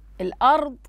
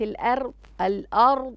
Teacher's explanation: لدينا تفخيمين في الضاد وفي الراء أيضا